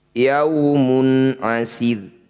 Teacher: Ro sukun didahului kasroh disebut bacaan ro tarkik. Tempelkan ujung lidah di pangkal gigi seri.